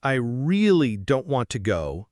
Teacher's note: they say the word really, with more stress to show they feel strongly about it.